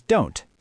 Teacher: The O in the word not completely disappears and we're left with an N and a T smashed together at the end of the word. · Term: negative contractions